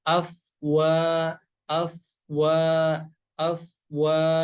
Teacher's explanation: ada huruf fa yang berharokat sukun. Cara bacanya harus dialirin.